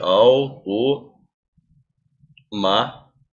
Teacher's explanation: Ou seja a sílaba tônica é a antepenúltima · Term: proparoxítona